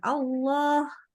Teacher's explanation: Lafaz Allah itu kita wajib tebalkan.